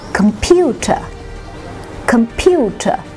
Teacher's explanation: the middle syllable is carrying the stress